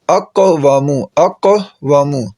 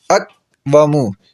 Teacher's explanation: قاف پر جزم ہے تو قاف پر قلقلہ کریں گے